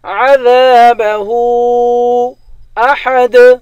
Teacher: ہاں پر الٹا پیش بھی ہے اور مد بھی ہے، اس مد کو تین الف کے مقدار کھینچ کر پڑھیں گے ۔ عذابہ احد، احد، آخر میں حروف قلقلہ ہے، یہاں پر